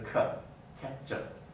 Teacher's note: the uh has become a schwa from vowel reduction